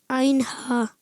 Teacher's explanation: आइन हा हलक के दरमियान वाले हिस्से से